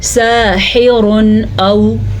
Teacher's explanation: ہم تنوین کی آواز کو ظاہر کر کے پڑھیں گے